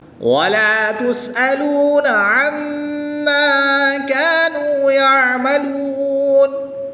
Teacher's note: میم مشدد میں ہمیشہ غنہ ہوتا ہے، غنہ کر کے پڑھیں گے